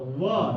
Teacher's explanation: तो ये देखो कंठतालु उदंतो वकारस्य दंतोष्ठम, व का उच्चारण स्थान दंत और ओष्ठ